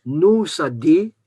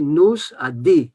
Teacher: Le Z de nos se prononce partout et il n'y a pas de différence.